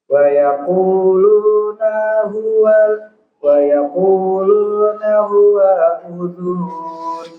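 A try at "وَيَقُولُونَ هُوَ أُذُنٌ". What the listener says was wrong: Konsentrasi, panjang pendeknya. Pendek. Huwa udhun. Iya, jangan dipanjangkan.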